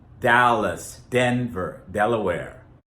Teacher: we tap, we don't slide, we tap our tongue. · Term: D sound